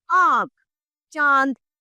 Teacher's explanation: जिन वर्णों को बोलते समय कंठ और नाक दोनों का प्रयोग किया जाता है, दोनों से ध्वनि निकलती है, वे अनुनासिका अर्थात चंद्र बिंदु कहलाते हैं।